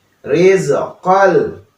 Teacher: Nah, di sini ada tanwin bertemu dengan lam. Nah, itu merupakan idgham bila gunnah ya. Jadi tanpa ada gunnah.